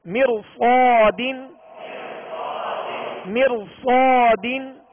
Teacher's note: را ساکن اسی کلمے میں ہے اور را ساکن سے پہلے اسی کلمے میں زیر اصلی ہے مر، اور اس کے بعد صاد حروف مستعلیہ میں سے ہے، لہذا اس را کو پر پڑھیں گے